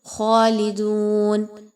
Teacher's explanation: لام کی زیر کو بہت اچھے سے پڑھنا ہے مجہول نہیں کرنا. دال واو پیش دو واو مدہ ہے 1 سے 2 الف کے برابر اس کی ادائیگی رکھیں گے.